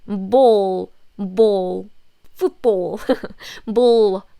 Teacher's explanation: English l sound is very tense